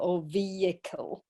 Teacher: but the the H is not pronounced